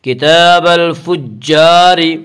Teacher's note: الفجاری کی را کو باریک پڑھیں گے۔ اس کا قاعدہ ہے کہ را کے اوپر زبر اور پیش ہے تو را کو پر پڑھا جائے گا، را کے نیچے زیر آئے تو را کو باریک پڑھیں گے، یا را کے اوپر یہاں را کے نیچے زیر اس سے را کو باریک پڑھیں گے۔